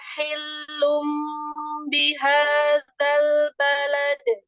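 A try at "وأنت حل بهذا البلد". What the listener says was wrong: Ini terulang lagi pada tahi. Jadi hanya seperti bertasydid. Harusnya tahi. Hi-nya jangan jangan pakai awalan yang lama. Hi gitu. Jadi dia seperti menyerempet ke huruf ta. Tahillum langsung. Tidak tahi, tapi tahi. Ambil hanya jangan pakai awalan hi. Jangan banyak-banyak. Langsung hi. Tahi. Disambung. Hanya itu kan ada awalan ditambah hi. Jadi seperti menyerempet ke ta. Jadi seperti hanya bertasydid. Padahal kan tidak.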